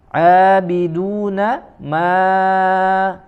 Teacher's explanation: huruf mim ya, makhrajnya dari kedua bibir ya, dan disempurnakan dengan sifat khayshumnya ya, keluar suara dari rongga hidung ya